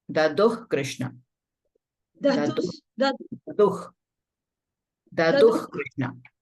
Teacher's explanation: Visarga followed by Ka will be Ha, half Ha.